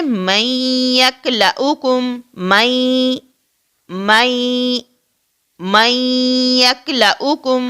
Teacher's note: ہم میم اور یا کی آواز کو ملاتے ہیں اور نون کو جو ہے اس کے اندر مدغم کرتے ہیں